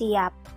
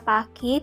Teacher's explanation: P pada siap diucapkan dengan kedua bibir tertutup sedangkan pada kata pagi berbunyi P ini harus dilepas